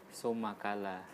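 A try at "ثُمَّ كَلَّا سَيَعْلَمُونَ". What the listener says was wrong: Tasdidnya so tidak jelas. Entah tasdid atau apa. Summa, jadi hati-hati juga mengucapkan huruf sa. Jadi huruf sa itu di ujung lidah ya. Ujung lidah landasannya adalah di seri A, di seri atas ya.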